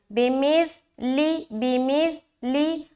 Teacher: سا کو بہت ہی نرمی کے ساتھ جلد ادا کریں گے اور سیٹی کی آواز بالکل نہیں آنی چاہیے